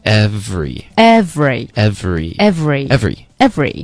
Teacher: 都会有一个震动 vry 的这个音